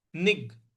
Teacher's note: यहां पर ग पर हमको आघात देना है।